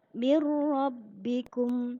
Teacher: lunya masuk ke huruf ro tetapi tanpa dengung hanya masuk saja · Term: idgham bilagunnah